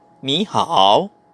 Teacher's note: Nakalagay dun sa ni is third tone. Kaso pagkadikit niya is another third tone, kailangan mo mag second tone.